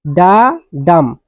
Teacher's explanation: an unstressed syllable followed by a stressed syllable. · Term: এম্বিক মিটাৰ